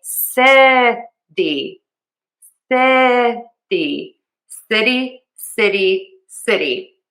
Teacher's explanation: I am using the flap t and that I like to teach as a very fast d sound